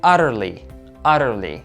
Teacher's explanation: I want you to pay attention to the double T here. It's flap T, and in American English, it's pronounced as a light D.